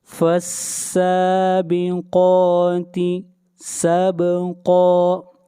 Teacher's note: قاف کو موٹا پڑھیں گے اور کھینچ کر پڑھیں گے ایک الف کے برابر